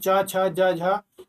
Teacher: ये होता है स्पर्श संघर्षी, उसको बोलते हैं तालव्य व्यंजन। ये तालव्य व्यंजन में आ जाएगा।